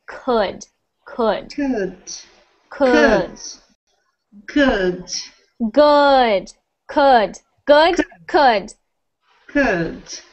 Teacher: so instead of it sounding like could like an ooh sound i want it to sound like an uh